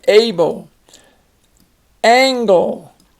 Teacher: that L makes a separate syllable the linguists tell us this is the shawa sound that it